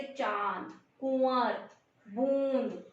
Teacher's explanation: और इनमें जो ध्वनि होती है, जो हवा होती है, वो नाक और मुंह दोनों से बाहर निकलती है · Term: अनुनासिक